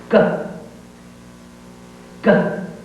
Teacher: And the tongue stops and then pops the sound out. And there is tone, so you should feel vibration in the throat.